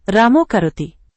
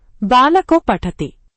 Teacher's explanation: అ తర్వాత విసర్గం దాని తర్వాత క ఖ ప ఫ ఇవేవైనా వస్తే విసర్గం మారి ఓ అవుతుంది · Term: ఉత్వ సంధి